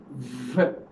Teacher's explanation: We use the lower lip with the upper front teeth. So it is called labio dental.